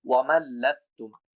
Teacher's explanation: মিমটা লামকে যুক্ত করবে কিন্তু কোনো গুন্না হবে না, কোনো দেরি করা যাবে না লামের উপরে, কারণ এটা বেলা গুন্নার হরফ। · নুন লামের সাথে যুক্ত হবে, এই জন্য নুন উচ্চারণ করা যাবে না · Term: ইদগামে বেলা গুন্না